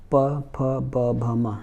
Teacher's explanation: और ओ में आ जाइए, ओ मतलब होता है होठ, प फ ब भ म, जहाँ दोनों ओठ मिले